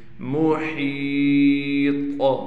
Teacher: ہا کو بالکل گلے سے نکالیں گے، ہا کے بعد یا ہونے کی وجہ سے ہا کو کھینچیں گے، طا پر قلقلہ بھی کیا جائے گا اور طا کو موٹا بھی کر کے پڑھیں گے۔